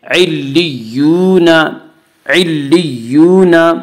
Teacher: نون زبر نہ، نون کے پاس زبر ہے، زبر کو جلدی پڑھیں، تھوڑا بھی نہ کھینچیں